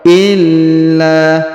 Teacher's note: Huruf la ditahan dan ditekan lalu dipanjangkan 2 harokat. Illa, karena di sini terdapat tanda tasdid ya.